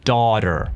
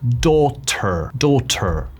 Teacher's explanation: Las T's dentro de palabras en inglés americano se pronuncia como una D. Daughter. Mientras si fuese inglés británico, diríamos daughter.